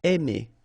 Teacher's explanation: when you combine A and I, then you get the sound E. Really open, E.